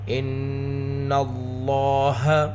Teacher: اللہ کے لام کو پر پڑھیں گے کیونکہ لفظ اللہ کے لام سے پہلے نون کے اوپر زبر ہے۔ ان اللہ، لام کی آواز کو 2 حرکت کے برابر کھینچ کر بھی پڑھیں گے۔